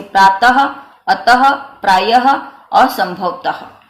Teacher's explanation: और इनका जो उच्चारण है, इन विसर्ग का जो उच्चारण है, विसर्ग हम लिखते इस तरह से है, यानी विसर्ग की मात्रा यह है, इस तरह से हम लिखते हैं। और इसका उच्चारण हमेशा ह रूप में, यानी अ ह, और वो भी आधा ह रूप में किया जाता है।